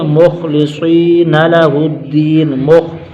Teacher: خا موٹا مستعلیہ کا حرف، صاد موٹا مستعلیہ کا حرف